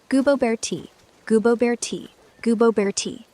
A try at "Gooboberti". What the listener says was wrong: You're kind of saying Goobo and then Berti. It's really Gooboberti.